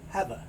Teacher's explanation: there's no sound for the E, so the V moves over to the A. So you don't hear have, you hear have a.